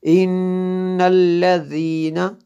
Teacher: یہاں پہ غنہ ہوتا ہے، نون مشدد ہے اس لیے